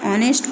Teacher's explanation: Example में देखिए, एन, इसको हम कई लोगों को जिनको जानकारी नहीं है ग्रामर के बारे में वो लोग इसको हॉनेस्ट पढ़ते हैं और हम लोग इसको हॉनेस्ट नहीं पढ़ेंगे, हम इसको ऑनेस्ट पढ़ेंगे। क्यों? Because H is silent here